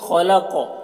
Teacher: خا اور قاف دونوں کو پر پڑھیں گے، یہ حروف مستعلیہ میں سے ہے۔